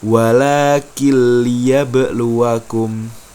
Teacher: nun sukunnya tidak usah dibaca atau dileburkan, dihilangkan langsung melompat ke huruf berikutnya, masuk ke huruf berikutnya. · Cara membacanya yaitu meleburkan suara nun ataupun tanwin dan langsung masuk ke huruf berikutnya tanpa dengung. Jadi bunyinya walakin liyabluakum. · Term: idgham bila ghunah